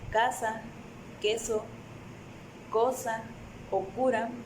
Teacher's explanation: Por último están los lingovelares. Estos forman una oclusión con el dorso de la lengua y el velo del paladar. El sonido sordo lingovelar es k, y cuando lo pronunciamos se puede notar que las cuerdas no vibran.